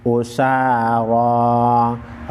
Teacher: रा पर कड़ी ज़बर है, कड़ी ज़बर की वजह से रा को मोटा पढ़ेंगे।